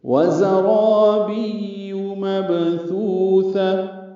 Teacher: وَزَرَابِيُّ مَبْثُوثَةٌ، واو ہونٹوں کی نا تمام گلائی سے جلدی ادا کریں. زا کو تیز صفیر کی آواز سے جلدی پڑھنا ہے. را الف مدہ ہے، دو حرکات لمبا ہے، را پر ہے.